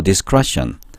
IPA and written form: dɪˈskreʃn (discretion)